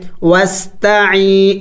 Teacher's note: سے پہلے اگر زیر ہو اس کو یا مدہ کہلاتے ہیں، تو یا مدہ کو ایک الف کا مقدار لمبا کرنا ہے